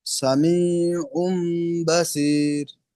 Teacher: তানবিনের পরে বা আছে। তানবিনকে মিমের দ্বারা পরিবর্তন করে এক আলিফ পরিমাণ গুণনা করে পড়তে হয় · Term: ইকলাব